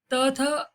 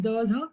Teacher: त थ फिर कठोर अघोष कहलाते हैं, द ध मृदु कहलाते हैं